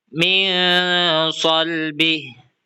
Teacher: Nun sukun bertemu dengan so sehingga dibaca min salbih dengan suara en yang disamarkan sebelum masuk ke huruf so. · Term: ikhfa